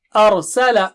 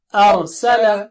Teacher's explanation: و گول کر کے کھولنا ہے اور آ پتلا ہے، را موٹا ہے